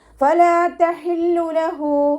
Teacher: ഹ അക്ഷരത്തിൻ്റെ സൗണ്ടിനെ തൊണ്ടയുടെ മധ്യഭാഗത്ത് തന്നെ കൊണ്ടുവരാനായിട്ട് ശ്രദ്ധിക്കുക. ഹ കൂടെ വാവ് സ്വൈറയാണ് വന്നിട്ടുള്ളത്.